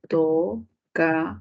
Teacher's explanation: Última sílaba con mayor fuerza de voz. Uy, palabra aguda, tocador.